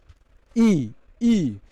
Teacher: जब आप ई का उच्चारण करते हैं तो ये हमारी जिह्वा जो होती है ई, तो आप देखेंगे स्पर्श करती है तालु